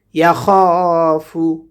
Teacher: খটাকে কণ্ঠনালীর মধ্যখান থেকে পড়ব